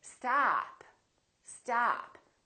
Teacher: this vowel is usually longer than most people who are non-native speakers tend to make it